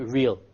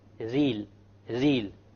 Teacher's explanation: The English R comes from the middle of the tongue, and the Arabic ra comes from the tip of the tongue. It is very important that when we pronounce the R in Arabic, the ra in Arabic, we do not roll the tongue.